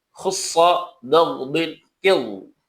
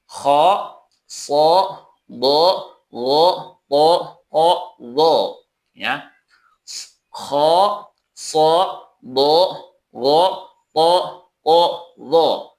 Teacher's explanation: Sedangkan n istilah adalah pengucapan huruf disertai dengan terangkatnya lidah ke langit-langit atau dibaca dengan suara yang agak tebal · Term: istila'la